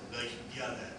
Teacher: the Y is a non-front, non-low, unrounded vowel whose exact realization depends on dialect. And the I that's adjacent to it is a glide